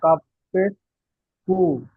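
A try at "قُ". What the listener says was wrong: জি না, এটা হবে কফ। কফ। কফ পেশ কু।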